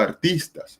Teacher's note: la fuerza de acentuación o la fuerza tónica vendría siendo en la sílaba, en la penúltima sílaba de tis